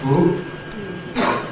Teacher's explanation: If you do everything for a Dark L, except you don’t move your tongue tip, you’re left with a back vocoid, a back vowel, [ɯ].